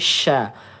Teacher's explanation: ini ada udara yang menyebar di dalam mulut kita